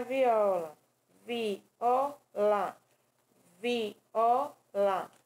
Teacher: viola duas vogais cada um em uma sílaba